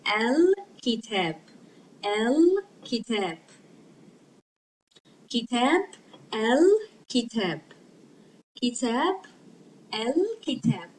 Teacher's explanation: we pronounce it because kaf is a moon letter. It makes lam pronounced. We pronounce the lam.